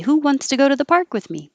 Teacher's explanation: wants to go to the is going to be a little faster, a little shorter, instead of the higher stretched out who and park